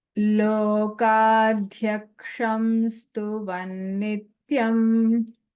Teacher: this Ksha, it is Kakara and Murdhanya Shakara. So the Murdhanya Shakara sound needs to be heard distinctly.